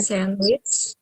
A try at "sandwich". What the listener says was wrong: No D sound in sandwich. It's not sand, which it is sandwich.